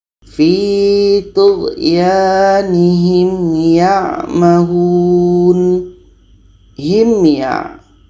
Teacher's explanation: Himya dibaca jelas dan tidak ada dengung. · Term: izhar syafawi